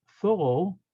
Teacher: And the last letters, Taf, is T, simple T, and this should be TH like thorough, but the Ashkenazim say it like S